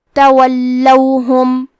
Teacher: کلمت تولوہم میں لام پہ تشدید ہے تو ہم 2 حرف کے برابر لام کو پڑھیں گے، اور کیونکہ تشدید زبر کا ہے تو ہمیں زبر کو ظاہر کرنا ہے۔